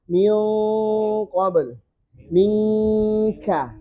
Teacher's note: Khusus qaf dengan kaf ini langsung ng eng. Min, tapi satunya tebal.